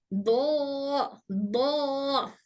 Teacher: दौद बोलते वक्त जबान साइडवेज मूव करती है, जबान के साइडवेज मूव होते हैं और ऊपर बैक टीथ के पास लगती है। मतलब हमारे जबान के दोनों जो साइड से वो इस तरह से मूव होते हैं।